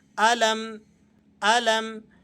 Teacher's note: بعض ساتھی یہاں میم پر غنہ کرتے ہیں جو کہ درست نہیں ہے، آپ نے یہاں بغیر غننے کے اس کو پڑھنا ہے۔